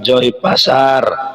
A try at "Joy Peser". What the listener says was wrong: Bukan di pasar itu, PSR itu. Tapi bacanya memang pasar banyak yang ini.